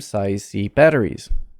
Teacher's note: probably batteries is going to have more stress than size c